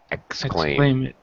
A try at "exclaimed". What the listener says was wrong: Exclaimed. Yeah, no extra vowel sound for the ed. Because why? Because M is a voiced sound.